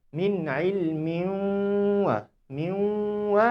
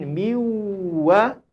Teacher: Min wa dengan miwa ada dua bunyi yang berbeza. Dua bunyi yang berbeza. Satu masuk dalam hidung, satu tak masuk dalam hidung. Jadi di sini kita perlukan bunyi kita ini masuk ke dalam hidung kita.